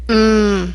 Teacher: the M sound uses the nose with lips closed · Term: nose sounds